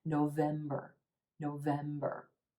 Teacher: our first and third syllables are quicker and quieter and we have that sound at the end November November we